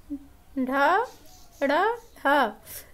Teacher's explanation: इनके उच्चारण में जीभ जो है वह उलट जाती है। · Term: उत्क्षिप्त व्यंजन